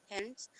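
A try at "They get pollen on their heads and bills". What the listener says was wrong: Heads, not hands. Heads.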